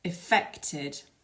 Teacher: make sure that you put the stress on the second syllable